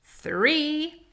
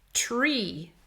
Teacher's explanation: These are two different initial sounds. 3 is TH, the tongue comes forward. Tree, t is a T sound, and the tongue does not come forward.